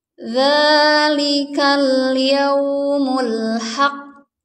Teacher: Jadi selesaikan dulu tasydidnya baru diqalqalahkan atau dipantulkan. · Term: huruf qalqalah